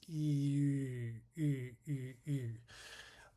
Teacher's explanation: it goes from the E, making the E sound, holding it, and then rounding the lips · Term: high front tense rounded vowel